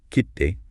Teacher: You hear that slight pause and emphasis on the ki sound.